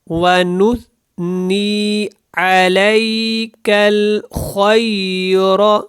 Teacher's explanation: خا کو جو ہے موٹا پڑھیں، اور را کو بھی آپ نے موٹا پڑھنا ہے